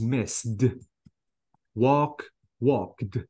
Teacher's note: last sound uh is any voiceless not voiced sound besides T the ending is T absolutely I don't have to add any syllable I mean here I don't have to uh pronounce the e